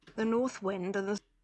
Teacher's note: North, and then we have a voiced interdental fricative